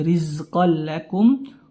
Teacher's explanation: idgham kita masukkan ya tanpa terdengar lagi suara Nun dari tanwin ya tapi tanpa gunah tanpa disertai adanya sengau pada hidung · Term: idgham bila gunah